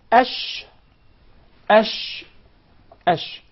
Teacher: place in the middle of the tongue in its elevation ash articulated from the middle of the tongue and what lies opposite to it from the upper palette or the roof of the mouth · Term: sheen